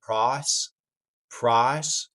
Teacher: Southern-esque thing of dropping the second half of the I diphthong, as in price, becoming a little bit of price, price.